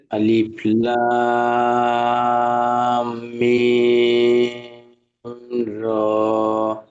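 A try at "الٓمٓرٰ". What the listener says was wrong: মাঝখানে একটা সমস্যা হচ্ছে, মিমগুলো একালিফ গুণা করতে হবে, মিমে তাসদীদ তো। আলিফ লাম, এই যে আঁচটা বন্ধ করে দিচ্ছি, এই একালিফ গুণা করে আবার টান দিচ্ছি।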